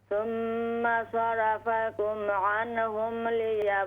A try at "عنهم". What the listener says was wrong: عنهم قلقل न करें नून में ثم صرفكم عنهم ليبتليكم